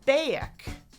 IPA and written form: beək (back)